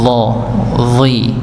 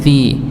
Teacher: membedakannya adalah pangkal lidahnya naik sebagai tanda tebalnya huruf pada huruf dha-nya.